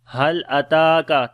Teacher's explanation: Ta we read in light sound, and also we long due to standing fatha.